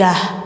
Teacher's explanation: Ini jangan yat tapi yah, taknya diganti ke ha ya.